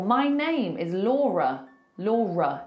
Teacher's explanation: It ends on a schwah.